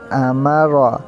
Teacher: اس سے آگے حمزہ زبر آ، میم زبر ما، را زبر را، امارا۔ را کے اوپر زبر تھا تو اس کو موٹا کیا